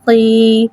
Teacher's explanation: یا ساکن سے پہلے دیر آ رہا ہے، یا مدہ ہو رہا ہے، لہٰذا یا مدہ کو ایک الف یعنی 2 حرکات کے برابر کھینچ کے پڑھیں گے اور زیر کو نیچے گراتے ہوئے ادا کریں گے